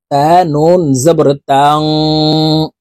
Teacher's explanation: তা নুন জবর তাং, গুন্নাহ করে পড়তে হবে, কারণ নুন সাকিনের পরে ইকফার 15টি হরফের ভিতর একটি হরফ সিন আসছে, তাই এই নুন সাকিনকে নাকের ভিতরে লুকাইয়া গুন্নার সহিত পড়ব।